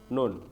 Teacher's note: nun harokatnya makhrajnya ada di ujung lidah ya. Di bagian gusi atas ya, gusi atas. Deket-deketan sama la sama ro.